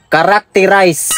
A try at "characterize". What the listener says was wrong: Ayaw lagi pinagahi. Characterize. Z-O. Dili na S.